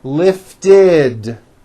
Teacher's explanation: we add the ending ID which is a vowel I followed by a d which is voiced